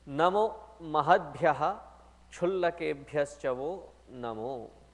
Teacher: here wherever there is a ksha, the visarga has to be distinctly pronounced.